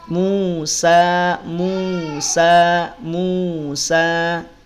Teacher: Musa sa panjang dua harakat